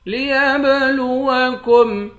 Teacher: یا کو با کے ساتھ ملا کر با پر قلقلہ کریں گے